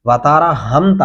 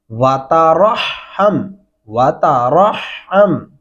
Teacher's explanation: اب جو صحیح طریقہ ہے وہ سن لیں، واو زبر وا، تا زبر تا، کیا بن گیا؟ واتا، را کو ہا کے ساتھ ملانا ہے کیونکہ اس کے اوپر شد ہے، اور پھر ہا کو میم کے ساتھ ملانا ہے کیونکہ اس کے اوپر جزم ہے